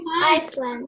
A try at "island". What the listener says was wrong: But what is important is that S we don't pronounce, we say island, island, okay?